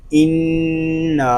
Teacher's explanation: اس کو ان نہیں پڑھیں گے بلکہ شروع ہی سے غنہ کریں گے. نون الف زبر نا، انا، نون میں شدت میں غنہ الف مدہ.